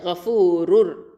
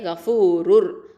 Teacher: அடுத்த வார்த்தையுடைய முதல் எழுத்து ரா. அப்போது இங்கே வந்து நம்ம இதகம் பண்ணி ஓதுவோம் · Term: இதகம் பிகைரி குன்னா